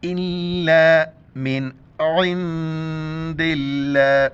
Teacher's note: یہاں پر ہمیں ناک میں آواز نہیں چھپانی ہے کیونکہ اس کے بعد حروف الکی ہر ہے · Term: نون ساکن